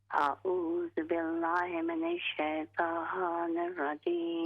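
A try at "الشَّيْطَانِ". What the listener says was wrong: ہاں جی، یہ لفظ ہوگا شیطا کی بجائے شیطان۔ ہے تو یہ شیطان کا نام ہے، آدمی سیدھا، لیکن اس کی جو ادائیگی ہے چونکہ عربی کا لفظ ہے نا، تو اس لیے ہم نے پورا کرنا ہے۔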